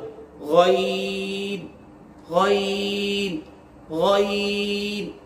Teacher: गईन का जो मखरज है वो सबसे ऊपर वाला जो हिस्सा है हल का, जहां से हमने खा अदा किया था, वहीं से गईन अदा होता है।